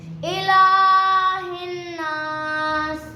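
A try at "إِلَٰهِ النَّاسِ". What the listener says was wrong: बेटा हिन पे देखे ना, नून के ऊपर शब्द है तो गुन्ना करेंगे ना, मिला के फिर गुन्ना करेंगे। इलाहिन नास। हिन नास। इलाहिन नास। यार थोड़ा लॉन्ग कर लो ना, क्या होता है, कुछ भी नहीं होगा।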